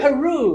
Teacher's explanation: Let's stress the second syllable.